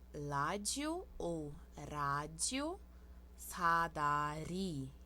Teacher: Aqui nós temos a consoante L, que é um som entre R e L. Só que esse R é R que a gente bate a língua no céu da boca atrás do dente.